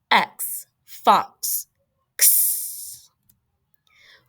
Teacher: It's two sounds put together. It is that K, k sound and that S sound.